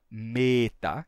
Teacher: o E longo é fechadinho. Ele é fechado, não é um simples E longo, mas ele é fechado, ele é E.